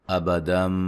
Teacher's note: یہاں نون تنوین کا اقلاب ہے، غنہ کریں گے، نون کو میم سے بدل دیں گے